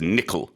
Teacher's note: So the emphasis is on the first syllable.